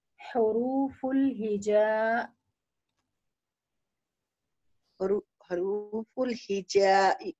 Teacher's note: جب ہم حمزہ کو ساکن کرتے ہیں تو ہم نے پڑھا تھا الاوتار الصوتیہ بند ہوتی ہیں تو ایک جی جھٹکا سا لگتا ہے